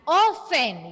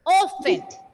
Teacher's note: Now, T is silent there. So we need to read that word as often.